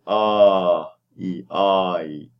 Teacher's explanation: Your tongue is going to rise and go up front to get the E. So you want to blend the and E together. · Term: diphthongs